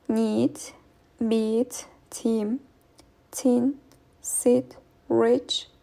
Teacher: The tongue position for this vowel is towards the front of mouth. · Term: Front vowels